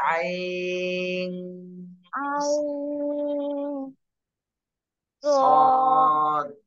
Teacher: আইন নাকের মধ্যে গুন্না করেন